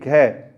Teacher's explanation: घ जब आप घ बोलते हैं तो दोस्तों देखिए जीवा है वो तालु से नहीं टकराती है,